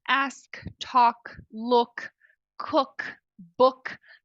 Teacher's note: O último som é sem voz, como em ask.